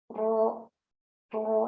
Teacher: tempat keluarnya itu ada dari ujung lidah ya, ujung lidah yang menempel ke langit-langit. Nah, ketika kita mengucapkan huruf ro, nah ya, itu suara kita yang seharusnya lurus gitu ya keluar, nah itu terhalang ya, terhalang.